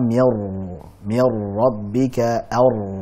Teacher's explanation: Jadi tetap ada unsur huruf ra, ada getarannya, kemudian ada sifat tawasudnya. Ya, semuanya itu dipadukan dalam satu pengucapan.